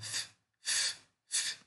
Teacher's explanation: Fricção, tá? Então, fricativo, ele é surdo.